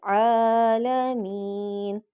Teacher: کیونکہ عین پہ کھڑی زبر ہے، کھڑی زبر کو ہم نے ایک الف کے برابر لمبا کرنا ہے